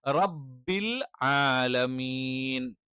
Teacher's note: റബ്ബിൽ ആലമീൻ അംസു അല്ല, പകരം എന്താണ്, ഐനാണ്